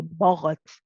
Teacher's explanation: the ghain is heavy, but the ba before it is light. It's very easy here to say baghat, because you're getting ready for a heavy rain.